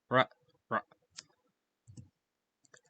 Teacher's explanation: the back of the tongue will be like where the velum is, so same place as where you usually do a g or k sound. And also, the tip of the tongue should be like in front of the hard palate, or like on the what's called the alveolar ridge.